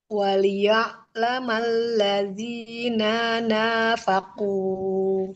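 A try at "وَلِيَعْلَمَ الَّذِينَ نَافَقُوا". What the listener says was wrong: Yang panjang nun yang kedua aja. Yang pertama dia nggak panjang. Waliya'lamal ladzina nafaqu.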